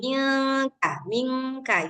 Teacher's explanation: Ketika digabung suara nun dengan suara K jadinya mirip eng. Tapi sebenarnya itu bukan eng eng kayak kita mau bilang enggak sebenarnya ming kita sudah siap-siap ke K ming ka mingka gitu ya.